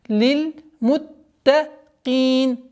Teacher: правило идгам без назализации, ассимиляция без назализации